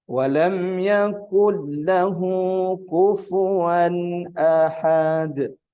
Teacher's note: Kufuwan ini tanwin, izhar, maka tidak boleh dibaca ikhfa. Beberapa kita sering mendengar ada membaca kufuwan, ini salah.